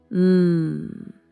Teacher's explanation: Feel your lips pressed together? Feel that little vibration tickling your nose?